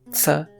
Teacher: the inclusion of the alveolar affricate, ts, which appears in merely 22% of languages